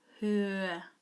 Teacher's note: the sound you hear at the end of her is ur.